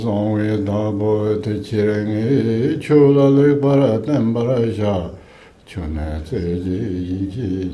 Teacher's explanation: So first one is not pitched that high, then the second one should pitch quite high, and then lower the pitch, and then lower the pitch. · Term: four-finger chanting